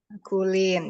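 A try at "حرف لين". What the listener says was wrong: Harfu, bukan harku, harfu, huruf harfu pakai F. Ya, harfulin atau huruf lin.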